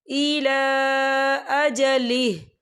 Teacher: इला लाम के ऊपर खड़ी हरकत है और इस पर छोटी सी मद भी है, तो हम इसे 4 हरकत के बराबर खींचे पढ़ेंगे